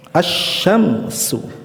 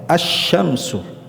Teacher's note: Lamnya dilebur ke huruf syin tidak dibaca lamnya. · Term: lam syamsiyah